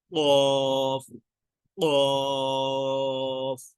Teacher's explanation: قاف جو ہے یہ زبان کی جڑ جب کوے کے قریب سے اس کے مقابل اوپر نرم تالو سے لگے تو یہ حرف نکلتا ہے، یعنی کہ زبان کی جڑ ہوتی ہے وہ، اور جو تالو کا اوپر والا حصہ جو کہ نرم ہے اس کو پڑھنے سے یہ ادا ہوتا ہے۔